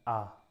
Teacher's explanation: सबसे ज़्यादा जो खुल रहा है ना वो आ में खुलता है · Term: विवृत